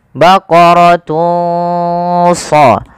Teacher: samarkanlah suara dhammatainnya, suara unnya kepada huruf shad.